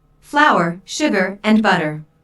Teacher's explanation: Notice that this is a list, so there are short pauses between each item. Notice also that each ingredient is stressed because this information is important.